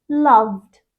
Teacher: when we add Ed to the end of it it becomes loved two voiced sounds together